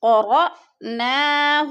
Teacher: ان علینا جمعہ وقرآنہ، فَإِذَا قَرَأْنَاهُ، فَإِذَا قَرَأْنَاهُ، فَإِذَا، دا کو لمبا کرنا ہے، الف مدہ ہے، قرأ حمزہ ساکنہ ہے، حمزہ ساکنہ کو ہم نے جھٹکا دے کے پڑھنا ہے تھوڑا سا